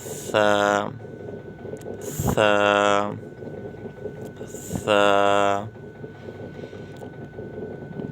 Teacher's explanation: زبان کی نوک جب اوپر کے اگلے دونوں دانتوں کی نوک کی طرف والے حصے سے لگے گی تو یہ حرف پڑھا جائے گا